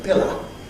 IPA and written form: ˈpɪlə (pillow)